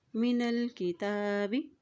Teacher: تا کے اوپر کھڑی زبر ہے اس لیے اس کو ایک حرکت لمبا ادا کریں گے